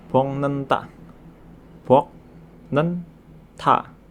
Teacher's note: bacim berbunyi K bertemu dengan N atau M, maka bacim berbunyi K tersebut akan berubah menjadi huruf eng. Sehingga dibaca menjadi Bongnenta. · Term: nasalisasi